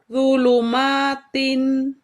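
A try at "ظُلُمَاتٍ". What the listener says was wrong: Zu-nya coba naikkan pangkal lidah, maaf di huruf wu-nya. Zu. Zulu. Zulumatin. Zulu.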